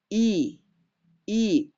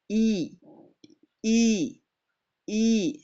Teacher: I seperti mahraznya huruf ya. Tengah lidahnya naik dikit.